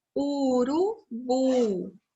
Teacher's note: o bu é a sílaba mais forte. É a sílaba tônica.